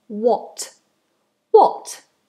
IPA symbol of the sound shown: wɒt